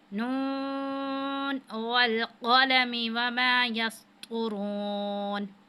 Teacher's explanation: नून, अब इसको खींचा के इसके ऊपर मद है, उसको हमने 5 अलिफ के बराबर खींचना है